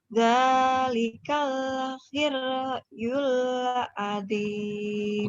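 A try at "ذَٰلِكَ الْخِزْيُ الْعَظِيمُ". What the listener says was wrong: Bukan here tapi his, ada titiknya kan. His ya. Zalika khizyul azim.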